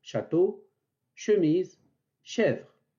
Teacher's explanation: de ce point d'articulation donc la 13e lettre de l'alphabet che se prononce au niveau du milieu de la langue qui monte vers le palais sans le toucher pour étrécir le passage de l'air